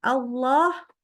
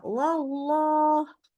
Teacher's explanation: Allahnya tetap tebal jadi baca bacanya wallah wallah gitu ya ingat Allah tebal itu karena mengangkat pangkal lidah